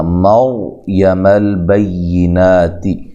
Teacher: را کو موٹا کرنا ہے، را ساکن سے پہلے حرف پر زبر یا پیش ہو تو را کو موٹا کیا جاتا ہے۔